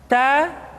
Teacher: keluar dengan menyentuhkan ujung lidah kita dengan gusi gusi gigi seri bagian atas · huruf t ketika diucapkan terdengar ada nafas yang mengalir